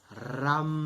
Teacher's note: R-A-N. A gente pronuncia com o R forte, né? Esse R retroflexo.